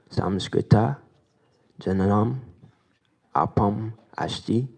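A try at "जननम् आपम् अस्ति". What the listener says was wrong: Sadhu.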